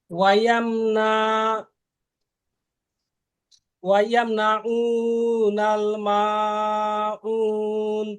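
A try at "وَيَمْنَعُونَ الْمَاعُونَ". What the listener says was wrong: হ্যাঁ ওয়ায়াম না, প্রথমবার টান হয়ে গেছে, নুন টান হয়ে গেছিল, নুন টান দেওয়া যাবে না, ঠিক আছে।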